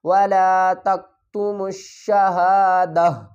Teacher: جب ہم یہاں پر وقف کریں گے، سٹاپ کریں گے، رکیں گے، تو ہم کیا کریں گے، دو زبر کو بھی ڈراپ کر دیں گے، تا کو بھی ڈراپ کر دیں گے، اس ہا کو ہم ساکن پڑھیں گے، اس ہا کے اوپر جزم لگا دیں گے۔